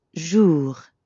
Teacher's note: the R at the end of jour doesn't really sound like an English R. You should feel that R in your throat.